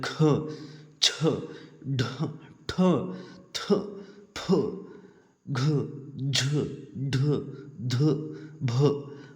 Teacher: ಹೆಚ್ಚು ಉಸಿರಿನಿಂದ ಉಚ್ಚರಿಸಲ್ಪಡುವ ವ್ಯಂಜನಾಕ್ಷರಗಳನ್ನ ಮಹಾಪ್ರಾಣಾಕ್ಷರಗಳ ಅಂತ ಕರೀತೀವಿ